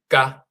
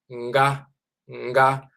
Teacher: here we have a and then ga, and that nga is nasal. So instead of just saying ga, it's nga, nga.